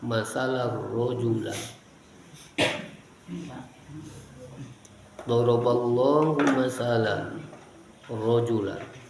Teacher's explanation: tanwin bertemu ro, idgham tanpa gunnah, idgham bila gunnah